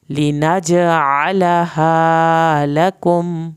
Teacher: जीम पे कलकला करना है, आइन को हल्क से पढ़ेंगे। आलहा, हा पूरा अदा करेंगे।